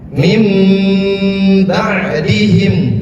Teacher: Mim itu seakan-akan dipanjangkan ya, tapi ditahan. Ditahan. Istilahnya gunnah, dengung, dengan digunakan.